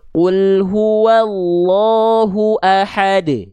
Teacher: itu qalqalahnya kubro, pantulannya besar